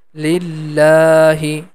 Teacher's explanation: I'm stretching the la sound for two count, and that is because of hidden small alif